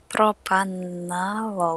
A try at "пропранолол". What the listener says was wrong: Не пропан, а пропранолол. Пропра. Пропра. Да, вот пропранолол.